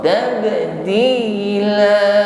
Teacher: huruf ba sukun juga qalqalah, maka pantulkan, pantulannya ringan saja, posisinya di tengah kalimat, tepatnya qalqalah sughra.